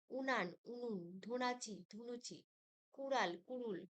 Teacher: পূর্ববর্তী হস্য ধ্বনির প্রভাবে পরবর্তী আ ধ্বনি হস্য ধ্বনিতে রূপান্তর ঘটে